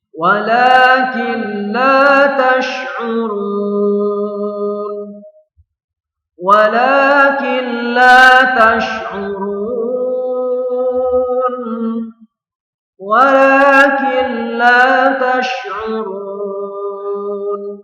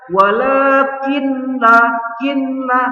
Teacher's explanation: Jadi bunyi nun ini diidghamkan ke lam atau dimasukkan ke lam. Jadi bunyinya nun sukun sudah hilang, ya, tidak ada bunyi nun, ya, di sini ketika kita membacanya. Jadi tidak boleh dibaca walakinlah, kinlah. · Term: idgham bila gunnah